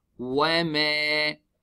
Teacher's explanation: Alif is harf mad preceded by fatha. We stretched harakatain.